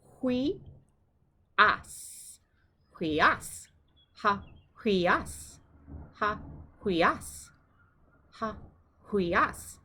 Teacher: The accent is on the second syllable.